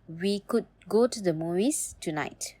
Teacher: with a falling tone suggests you are done talking and expecting a response